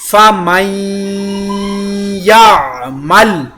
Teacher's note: فَمَن یعمل، یہاں پر میں نے نون ساکن کے بعد حروف یرملون کی یا شدہ نون کا ادغام اور غنہ دونوں کیا